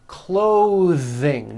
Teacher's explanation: Notice how my tongue comes out in the middle of the word and the TH sound is pushed out. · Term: voiced TH sounds